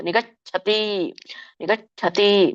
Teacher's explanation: ಸಣ್ಣ ಚ ಬರುತ್ತೆ ಛ ಹೇಳುವಾಗ ಆಮೇಲೆ ದೊಡ್ಡ ಛ ಉಚ್ಚಾರಣೆ ಆಗುತ್ತೆ